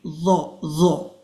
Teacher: As for this one, this is the, and this is another letter where you pronounce with the tip of the tongue against your upper teeth, the bottom of your upper teeth